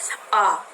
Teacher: और आ में हमारी जीभ बिल्कुल नीचे सट जाती है, नीचे गिर जाती है आ। तो यहाँ पर मुख विवर्त जो है विवर्त की तरह यानी पूरी तरह खुल जाता है तो वो आ होता है।